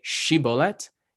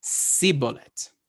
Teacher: But he wouldn't say Shibboleth, he would say Siboleth. Like the shin morphed into a sin